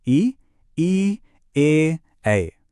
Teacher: सबसे पहले देखिए, अग्रस्वर। इसमें जीभ का अगला भाग एक्टिव होता है और उदाहरण हैं ई, ए।